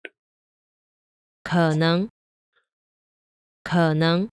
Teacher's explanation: notice that the second tone starts higher than the end of the third tone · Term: 3-2 combination